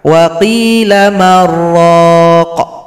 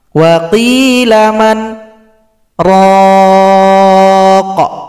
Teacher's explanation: karena ada nun yang sukun berjumpa ra, kita idghamkan. Wa qila marraq.